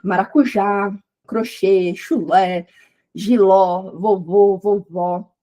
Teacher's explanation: Então, por exemplo, maracujá, crochê, chulé, giló, vovô, vovó, são todas acentuadas porque tem a última sílaba mais forte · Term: oxítonas